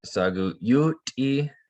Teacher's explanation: It's a glottalized T.